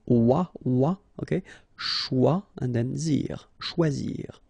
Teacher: when you combine this C and H, you get the sound sh, and then OI, wa